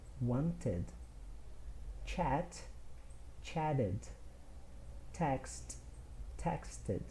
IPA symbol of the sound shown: ɪd